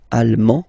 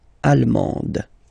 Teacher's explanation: you don't pronounce the final D, but then you pronounce it here for the feminine form